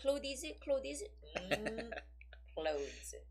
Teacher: So like you can pretend that there used to be a TH sound, but you're not saying it